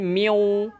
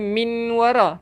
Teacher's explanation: Dia memasukkan, dia masuk terus dekat waw. Nun ni dia tak bunyi dah. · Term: idgham